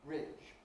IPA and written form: rɪˑʤ (ridge)